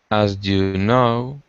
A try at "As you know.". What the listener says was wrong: No. Gotta drop down at the end.